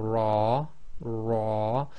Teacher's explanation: again slightly different variation in how the tongue operates but generally the front of the tongue touching the hard pallet just before the gums